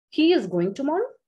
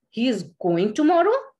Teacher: A में drop हो रहा है at the end, ये एक statement है. B में rise हो रहा है, it becomes a question.